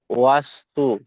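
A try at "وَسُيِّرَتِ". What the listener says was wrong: সিন ইয়াপে সুই। সিন পেশ না, ইয়ার উপর সাকিন এসছে, যুক্ত করতে হবে। সিন ইয়াপে সুই ও সুই। ও সুই র ও সুই ইয়ার উপর তাজদিদ আছে, ইয়াটি দুবার হবে।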